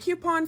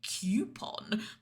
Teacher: It's like she added in a Y to make it coupon